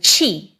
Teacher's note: if we added an aspirated T sound, we got ch as in chi. And if we dropped the aspiration, we got ji.